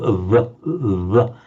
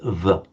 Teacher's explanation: not lower lip against upper teeth, but lips slightly together